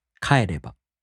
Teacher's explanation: these verbs, the accent falls on the fourth to the last mora. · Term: accented mora